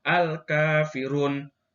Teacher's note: bacaan panjang 2 harokat matobi'i yang terdapat pada kalimat Al-Kafirun